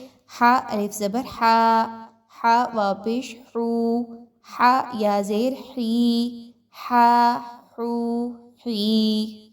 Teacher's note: وسط حلق سے ہا کو نکالیں گے